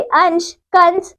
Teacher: अनुस्वार। अनुस्वार का उच्चारण नाक से किया जाता है।